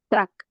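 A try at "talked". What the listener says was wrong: Yeah, but you pronounce it just the letter K. After the letter K, you must pronounce the letter T, tucked.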